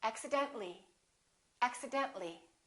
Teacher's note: when we add accidentally we don't pronounce the I